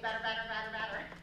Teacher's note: a medial flap. They're pronounced the same way. The tongue just taps. That's because you've got voicing immediately before and immediately after the t or the d.